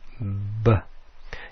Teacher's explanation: You're using airflow, you're using your lips, but you're not using your tongue or your teeth.